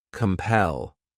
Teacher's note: The next verb is compel. This word has 2 syllables, and the stress is on that second syllable.